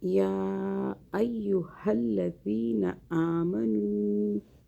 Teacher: یا ایہا الذین آمنوا، یا جو ہے مشدد، اس یہاں پہ دو آوازیں بنانی ہیں، طاقت سے پڑھیں۔ یا کو کھینچیں، چھوٹی مدہ آ رہی ہے۔